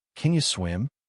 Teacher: The can almost disappears. But swim is strong, clear. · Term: stressed words